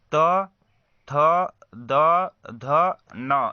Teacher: जिन व्यंजनों के उच्चारण में जिह्वा की नोक ऊपरी दांतों को स्पर्श करती है उसे हम दंत व्यंजन कहते हैं।